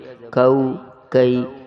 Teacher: بغیر نقطے والا کاف باریک اور پتلا کر کے پڑھیں گے